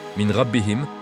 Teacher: le nun se fond dans le ra avec nasal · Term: Idgham